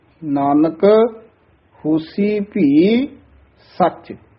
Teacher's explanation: ਉਚਾਰਨ ਹੈ ਹੈ ਭੀ ਸਚ ਨਾਨਕ ਹੋਸੀ ਭੀ ਸਚ ਇਹ ਵੀ ਨਾਨਕ ਪਦ ਤੇ ਯਮਕ ਲਾ ਕੇ ਉਚਾਰਨ ਕਰਨਾ ਨਾਨਕ ਯਾਨੀ ਥੋੜਾ ਜਿਹਾ ਰੁਕ ਕੇ ਨਾਨਕ ਹੋਸੀ ਭੀ ਸਚ ਭੀ ਸਚ ਨਹੀਂ ਕਹਿਣਾ ਹੈ ਭੀ ਸਚ